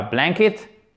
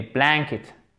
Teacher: Accent tonique sur la première syllabe.